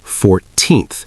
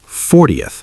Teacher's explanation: for numbers like 14th, the stress is on the second syllable, 14th. But for 40th, the stress is on the first 40th.